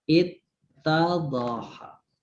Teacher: Jadi wawunya itu ketemu tak, dia jadi mudgham, jadi idgham.